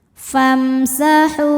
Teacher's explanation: Karena mim sukun menghadapi huruf selain mim dan ba, yaitu huruf sin. Maka mim sukun dibunyikan dengan jelas. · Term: idzhar syafawi